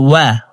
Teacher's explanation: ওয়াও হরফকে দুই ঠোঁট গোল করে দুই ঠোঁটের মাঝে ফাঁকা রেখে পড়তে হবে।